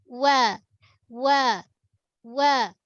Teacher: Makhraj waw seperti mana kita dah maklum. Waw ni menggunakan dua bibir. Gunakan dua bibir. Nipis.